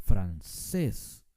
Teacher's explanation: al final veamos otra palabra la palabra francés no decimos francés decimos francés con mucho énfasis al final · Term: palabra aguda